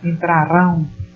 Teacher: elas são oxítonas, porque a sílaba é identificada na última sílaba.